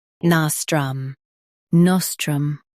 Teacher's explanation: Stress na and keep strum smooth.